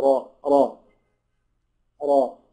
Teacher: الراء دي مفتوحه يبقى تفخم